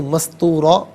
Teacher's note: فی الکتابی مستوراً، یہاں وقف کریں گے تو مستورا پڑھیں گے، را پر دو زبر کی تنوین ہے تو اسے پر کر کے پڑھا جائے گا، اور وقف کی صورت میں بھی اسے پر کر کے ہی پڑھیں گے۔